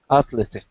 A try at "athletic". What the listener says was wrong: Close. We want to emphasize let. So athletic. Athletic.